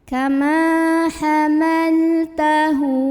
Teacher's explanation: Dan huruf setelahnya ini bukan hamzah ya. Jadi cara membunyikan hak domirnya ini adalah dipanjangkan 2 harokat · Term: mad silah qasirah